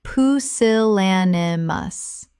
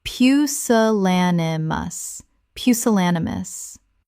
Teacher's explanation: 5 syllables with the stress on the third